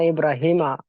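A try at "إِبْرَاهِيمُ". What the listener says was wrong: जबर के साथ पढ़ा। अरबी में जेर जबर पेश की गलती बहुत बड़ी मानी जाती है। मतलब अगर हमने पेश की जगह पर जबर पढ़ दिया तो पूरा जो है स्ट्रक्चर जुमले का चेंज हो जाएगा, माना बदल जाएगा।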